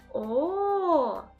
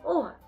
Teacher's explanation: губи витягнуті вперед округлені зуби закриті губами язик лежить на дні ротика і не заважає проходженню повітря немає ніяких перепон звук о утворюється за допомогою голосу він голосний